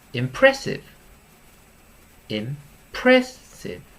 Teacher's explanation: it's three syllables the stress is on the middle one